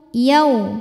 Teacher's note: ada wau sukun didahului harakat fathah maka dibacanya dilembutkan atau dilunakkan yau bibirnya monyong ya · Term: huruf Lin